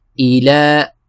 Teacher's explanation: ہم پڑھیں گے حمزہ زیر ای، ایلا، ایلا، ایلا، اور لام کو کھینچنا ہے کیونکہ لام کے اوپر کھڑی زبر ہے، تو اس کو ہم 2 حرکت کی مقدار کھینچیں گے